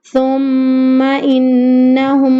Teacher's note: جب میم مشدد کا غنہ ادا ہوگا تب ہمارے دونوں ہونٹ آپس میں مل جائیں گے اور ہمیں وہاں پر 2 سیکنڈ کے لیے رک جانا ہے